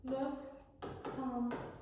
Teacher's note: sözün ortasında q samitindən sonra kar samit gələrsə, q k kimi tələffüz olunur. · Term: q k-ya keçir